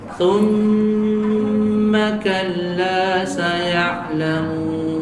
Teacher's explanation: Maka summa di sini mim yang bertasydid, maka dia dari sisi makhraj yang kedua far'i, maka dia sifatnya gunnah. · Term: gunnah mutawwalah